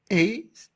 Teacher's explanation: E est une voyelle orale fermée, antérieure, non arrondie.